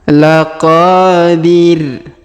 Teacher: huruf qo kita panjang dua harakat karena terdapat Alif di depannya